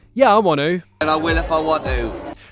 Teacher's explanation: it doesn't sound like wanna, it sounds like wanoo